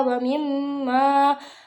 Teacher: Lalu pada kata wa mimma terdapat hukum bacaan gunnah. Cara bacanya panjang 2 harokat.